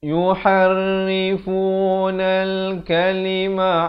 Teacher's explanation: Jadi alif lam qamariyah, lamnya dibunyikan dengan jelas.